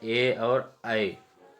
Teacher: कंठ तालव्य यानी कंठ और तालु की मदद से जो उच्चारित होते हैं उसे कंठ तालव्य कहते हैं।